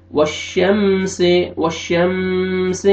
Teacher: वश्शम्सि मीम साकिन का इज़हार जल्दी पढ़ेंगे। वश्शम्सि, वश्शम्सि इख्फा नहीं करेंगे, नोज़ में साउंड नहीं लेके जाएंगे। वश्शम्सि जल्दी पढ़ेंगे।